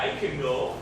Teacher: and it sounds like a last syllable of bacon or Mexican the vowel in can is short and unclear